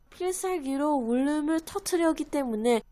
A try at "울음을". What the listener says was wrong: Yeah, so 울음을, if you kind of make that liaison work a little more fluidly, that would be nice. Because now she pronounced it as 울음을. 울음을. A little softer.